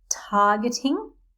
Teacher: the stress is on the AR